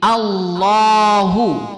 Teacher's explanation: Kemudian pada lamul jalalah itu ditebalkan, ditafkhimkan. Jadi Allahu.